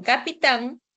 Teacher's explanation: En capitán, tan va a ser la sílaba tónica.